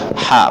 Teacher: makhrajnya di pangkal tenggorokan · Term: huruf H kecil